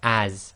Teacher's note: But it's giving a slight zed sound. Even though in English it's got an s, but it's a zed sound